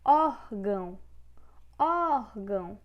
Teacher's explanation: Órgão é a penúltima sílaba, ou seja, é paroxítona.